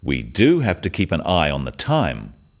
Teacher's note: notice the emphasis on the word do